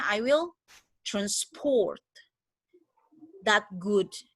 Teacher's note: si transport karena saya stressnya di second syllable, berarti dia menjadi verb